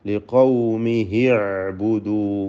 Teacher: യഥാർത്ഥത്തിൽ അവിടെ ഒരു മദ്ദുസ്സിലത്ത് സുഗ്റ നഷ്ടമാവുകയാണ്. കാരണം ശേഷമുള്ള അക്ഷരത്തിന് സുക്കൂൻ വരുന്നത് കൊണ്ട് ചേർത്തോതുമ്പോൾ ആ ഹായിന് ദീർഘമുണ്ടാവുകയില്ല. ഇൽത്തിഖാ സാക്കിനൈൻ വന്നതുകൊണ്ട് ലിഖൗമിഹി അഅ്ബുദു എന്ന വായിക്കേണ്ടത്.